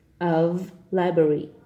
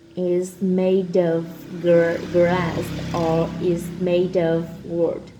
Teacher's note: For example, statue of library, and notice how I connected the word of with the word library, of library. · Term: voiced V